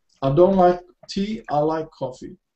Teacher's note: So we have stress on tea and coffee.